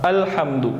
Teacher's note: آپ اس جب بولتے ہیں تو یہ حمزہ کی آواز نکالتا ہے، الحمد، تو یہ حمزہ کی آواز ہے، الف کی آواز نہیں ہے